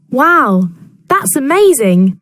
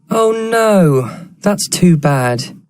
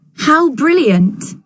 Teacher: falling intonation in exclamations